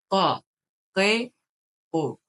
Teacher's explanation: Qaf hərfi bizdən fərqli olur, daha qalın, daha boğazın ortasından çıxan bir qadır. Q samitidir, yəni.